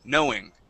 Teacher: try not to add as much ooh at the end